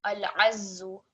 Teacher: So this ain and this za, extra stress on the za because it carries a shadda.